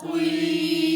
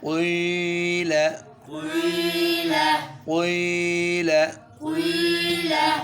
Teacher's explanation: پیش کے لیے تو نارمل موٹا، لیکن زیر ہو اور پھر موٹا بھی کرنا ہو یہ تھوڑا سا محنت چاہتا ہے، کیونکہ زیر چاہتی ہے کہ آواز نیچے ہو اور وہ مستعلیہ چاہتے ہیں کہ زبان کی جڑ اوپر اٹھے، تو آواز نیچی بھی اور جڑ اوپر بھی اٹھے.